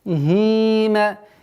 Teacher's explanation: Удлинение в размере двух огласовок касры.